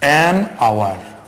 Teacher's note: Sometimes you might have the consonant sound, but the consonant sound remains silent and there the vowel sound is pronounced